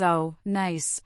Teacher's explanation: Her voice likely rises with enthusiasm, showing genuine curiosity. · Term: intonation